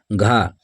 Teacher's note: घा वर्ण का उच्चारण स्थान कंठ है।